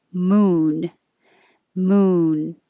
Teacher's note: if it's moon it's single syllable and it's an ooh vowel so you have to round your lips